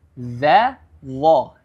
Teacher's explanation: Huruf dha dengan tasydid ya, atau penekanan di situ. Huruf dha perlu diperhatikan memiliki makhraj atau tempat keluar hurufnya yang berada pada ujung lidah.